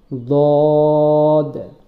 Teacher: দদ বলার সময় জিহ্বার গোড়া, জিহ্বার গোড়ার কিনারা, দুই সাইডে কিনারা উপরের দাঁতের আগার সঙ্গে লাগিয়ে মোটা করে বলতে হবে